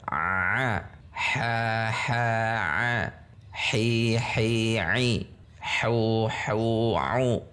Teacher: huruf ha berada di tengah tenggorokan. Wastul halq. untuk mengucapkannya harus ditekan. Mau tidak mau harus ditekan.